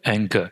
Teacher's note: you can feel the back of your tongue touch the soft palate or the velum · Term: velar consonants